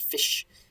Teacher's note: Usually it's a sh sound, but in some dialects it's sk